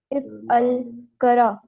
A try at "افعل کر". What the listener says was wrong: کر کر کرا نہیں، یہ الف نہیں ہے، یہ نشانی ہے. ایک منٹ ایک منٹ، یہ میں آپ کو بتاتا ہوں، یہ کسی بھی اس کے آرڈر کے لیے اس طرح کر کے لکھا جاتا ہے.